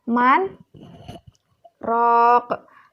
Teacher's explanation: berhenti sejenak tanpa mengambil nafas sebanyak atau selama 2 detik atau 2 harokat, yaitu terdapat dalam kata man, rok. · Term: saktah